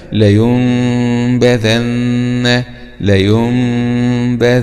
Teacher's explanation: يبقى هنا نلاحظ أنه جاء كذلك حرف الباء بعد النون الساكنة في كلمة واحدة، والباء من حروف الإخفاء الإقلاب. يبقى هنا هذه النون تقلب إلى ميم بغنة مع الإخفاء